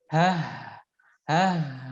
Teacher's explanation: Nah, sini ada ha sukun ya, mengalir nafas atau udara serta mengalir suara.